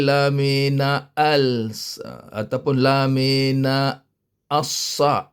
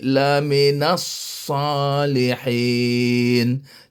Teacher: As tak bunyi lagi. Lam pun tak bunyi, alif pun tak bunyi. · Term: idgham syamsiah